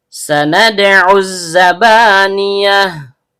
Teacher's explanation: bertemu dengan alif lam idgham syamsiyah. Alif dan lamnya tidak terbaca · Dal, ujung lidah bertemu dengan pangkal gigi seri atas. Karena dalnya sukun dan berada di tengah kata, maka terjadi hukum bacaan qalqalah sugro, bunyi pantulannya kecil.